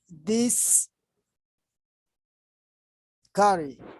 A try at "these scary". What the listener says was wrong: These carry. Yeah, don't separate. These carry. These scary books. These scary. All together.